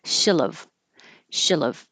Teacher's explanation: In written, you wouldn't do this, but shillov. And instead of a perfect E, as in she love, you can keep the tongue a little lower and it will sound like I.